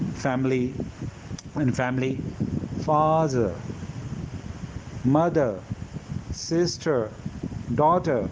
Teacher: when we have R at the end of the word in British English and before that we have vowel, so that R is silent, and this is also silent in the middle.